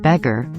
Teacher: the first part of the word beg is stressed but not the gar where the schah is as in about the second part of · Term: schwa